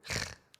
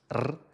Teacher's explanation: o som forte, que alguns portugueses pronunciam [ʁ] e outros [r]